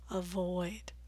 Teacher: two syllable verbs are frequently stressed on the second syllable so make that vowel long and clear